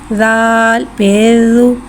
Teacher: ज़ाल को एक अलिफ यानी 3 हरकत के बराबर खींच के पढ़ेंगे। ज़ाल नरमी वाला उर्फ़ लिहाजा इसमें सीटी नहीं आएगी, इसको बगैर सीटी के पढ़ेंगे। ज़ाल के ऊपर पेश से पेश कोटों की गुलाई के साथ अदा करके पढ़ेंगे।